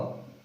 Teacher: वा का उच्चारण स्थान क्या होता है, दंतोष्ठ होता है।